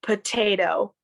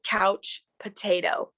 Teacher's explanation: It's almost like that last T is making a D sound instead of a T sound.